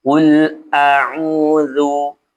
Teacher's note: lam sukun itu dibaca tidak memantul ya, tidak memantul karena huruf lam ini memiliki sifat tawassut ya. Pastikan ada mengalir sedikit ya. · qul bukan qul auu qul auu a baca jelas a u dibaca dua harakat karena huruf ain ini setelah harakatnya dhammah ini ada huruf wau maka dibaca panjang dua harakat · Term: mad thabi'i